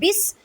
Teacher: با سین زیر بس، با کو سین ساکن کے ساتھ ملائیں، سین کو سختی سے ادا کریں کیونکہ سین سیٹی والے حروف میں سے ہے